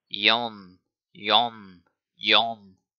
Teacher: Yon, as in yonder, but nasalized.